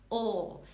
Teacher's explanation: your L is a dark L in the back of the mouth